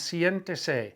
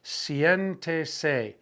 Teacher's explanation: the IE is functioning as a diphthong. It's two vowels functioning as one sound, and it's going to go on the E.